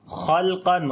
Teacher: اظہار شفوی ہوگا، میم کی آواز کو ظاہر کریں گے، خلقن خا اور قاف دونوں کو موٹا پڑھیں گے، لام کو باریک پڑھیں گے